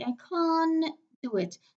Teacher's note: We have three consonants cluster, so the T in between will be elided. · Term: elision